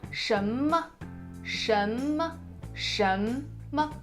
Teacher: So it is rising from the middle of your voice range to the highest. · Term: the rising tone